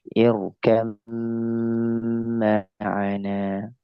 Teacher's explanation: Karena mim dia hukumnya adalah ghunah musyaddadah dia mimnya jadi digunahkan